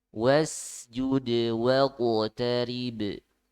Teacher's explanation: di sini ada 3 huruf qalqalah sekaligus ya. Huruf dal, qaf, dan ba.